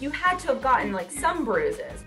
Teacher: the D in had is pronounced as a stop consonant, which then immediately connects with to. The word to gets reduced to ta, so we hear you had to.